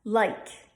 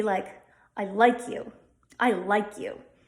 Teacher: The I diphthong, AI, as in like, becomes very mid-mouth with a stressed schwa followed by a short I.